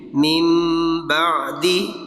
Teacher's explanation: تو من آگے چھوٹی سی میم لکھی ہوئی ہے، تو جب ہم من کو آگے با کے ساتھ ملائیں گے تو پھر وہ میم پڑھا جائے گا، مم بعد ہوگا. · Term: قلب